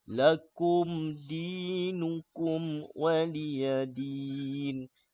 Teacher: mim bertemu huruf dal kena jelas kemudian mim bertemu waw pun kena jelas hukum di sini kita panggil hukum syafawi mim bertemu huruf dal ya, izhar syafawi ni mim bertemu waw ni izhar syafawi tak boleh kita baca lakum dinukum tak boleh sebab hukumnya izhar izhar syafawi.